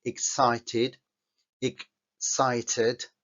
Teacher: la x en sí no tiene un sonido propio sino que es la mezcla de dos sonidos el sonido de la k Con la s